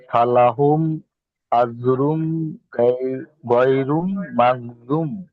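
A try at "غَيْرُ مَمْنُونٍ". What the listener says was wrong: গয়রুন তো আপনি পড়েননি, গয়নের উপর তো পেশ আছে শুধু, তাহলে এখানে হবে গয়রু। গয়রু, রু, রর উপরে একটা পেশ আছে।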